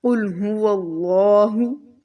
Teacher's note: इसको हम बहुत मोटा पढ़ेंगे और लाम के ऊपर खड़ा ज़बर है तो इसको थोड़ा लंबा भी करेंगे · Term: अल्लाह वाला लाम